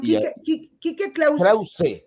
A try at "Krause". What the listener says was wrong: Krause. Ese, con E, Enrique Krause.